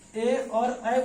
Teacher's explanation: ए और ऐ बोलने पे कंठ तालब यानी कंठ का भी प्रयोग होता है और तालु का भी प्रयोग होता है। तो इसलिए संयुक्त रूप से इसको बोल दिया जाता है कंठ तालब, कंठ तालब, कंठ तालब बोल दिया जाता है संयुक्त रूप से इसको।